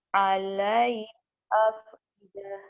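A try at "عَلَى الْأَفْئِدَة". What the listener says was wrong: alal bukan alai. Alal. Ya-nya nggak bukan alai ya. Ya-nya nggak dibaca.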